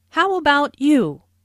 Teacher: Notice the intonation falls here because the speaker is going to follow it up with a detailed question.